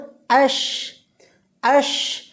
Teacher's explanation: হামজা শিন জবর আশ আশ, বাতাসটা ছড়িয়ে দেব জিহ্বার মাঝখানে এবং তালুর মাঝখানে আমরা কী করব, বাতাসটা ছড়িয়ে দেব।